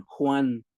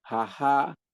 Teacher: en el TENEC es suave totalmente, como si fuera H, pero no es H, es J suave.